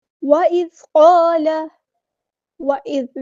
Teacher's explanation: ذال کو نرمی سے ادا کرنا ہے، باریک ادا کرنا ہے